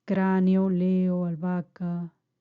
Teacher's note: es la secuencia de dos vocales que no se pronuncian dentro de la misma sílaba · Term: hiatos